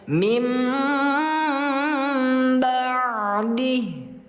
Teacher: tidak dibaca min lagi tapi rapatkan kedua bibirnya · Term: iqlab